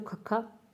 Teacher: ਮਹਾਪ੍ਰਾਣ ਵਿਅੰਜਨ, ਜਿਨ੍ਹਾਂ ਦੇ ਉਚਾਰਨ ਸਮੇਂ ਹਵਾ ਮੂੰਹ ਦੇ ਵਿੱਚੋਂ ਫਰਾਟੇ ਦੇ ਵਾਂਗ ਬਾਹਰ ਨਿਕਲਦੀ ਹੈ, ਵੀ ਇੱਕ ਫਰਾਟੇ ਦੀ ਤਰ੍ਹਾਂ ਹਵਾ ਬਾਹਰ ਆਉਂਦੀ ਆ, ਉਸ ਸਮੇਂ ਮਹਾਪ੍ਰਾਣ ਵਿਅੰਜਨ ਹੁੰਦੇ ਨੇ, ਠੀਕ ਹੈ।